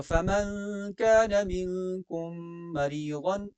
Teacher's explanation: میم ساکن کے بعد میم ہے تو ادغام مع الغنہ